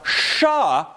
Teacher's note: So pa is, and ba is, and sa is. But sha, which is made by bringing the tip of the tongue right behind the alveolar ridge, is not. Okay, so far so good.